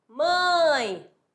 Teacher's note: o A é vogal, o E é semivogal